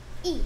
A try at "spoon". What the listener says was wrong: 근데 얘는 O O는 E 소리 안 나는데 O O는 소리 하나 가지고 있고 항상 U 되는데. 그래, 스핀이 아니고 뭐야? 스푼이야. 숟가락 스푼.